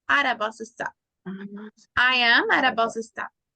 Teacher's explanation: podemos hacer el sonido de esa T como que fuera una R